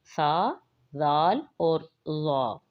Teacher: جڑ کے ساتھ نہیں، ان کے کناروں کے ساتھ، دانت کے کنارے کے ساتھ لگیں گے تو یہ ادا ہوں گے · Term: حروف لثویہ